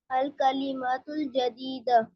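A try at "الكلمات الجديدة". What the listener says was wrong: मीम को खींचे. अल कलिमातुल जदीदतु.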